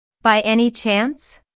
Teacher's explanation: Notice the rising intonation, which is used in yes, no questions to confirm that something is true.